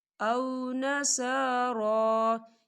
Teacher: صا کھڑی حرکات ہے اور را یہاں بھی کھڑی حرکات ہے، تو اسے ہم دو حرکت کے برابر کھینچ کے پڑھیں گے